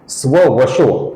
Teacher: स्ववशः का जो विसर्ग है इसके आगे व्यापी का व आया हुआ है, इस कारण से इस विसर्ग का हम ओ ऐसा उच्चारण करते हैं। अर्थात स्ववशः का लिखते समय तथा उच्चारण करते समय हम स्ववशो ऐसा ही रूप यहां पर देखेंगे।